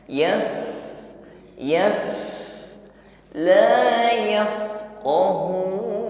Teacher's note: Aidan nutqi bil harfi ya. Ketika fa ini disukun maka hembusan nafasnya lebih nampak ya daripada ketika berharokat. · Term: fa sukun